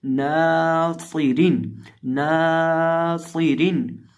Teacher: रॉ को बारीक इसलिए पढ़ेंगे क्योंकि रॉ के नीचे 2 ज़ेरें हैं। सौद को मोटा पढ़ेंगे, रॉ को बारीक पढ़ेंगे, नून को लंबा करके पढ़ेंगे और सौद के अंदर सीटी की आवाज़ पैदा करेंगे।